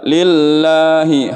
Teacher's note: lamnya juga tidak boleh terlalu lama ditahan. Harus sebentar saja.